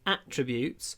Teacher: the noun is attributes, with the stress on the first syllable. Attributes.